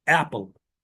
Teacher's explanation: There is no schwa in between p and l. As you see, l sound gets a weak stress over here. Some people say that the l doesn't get any stress.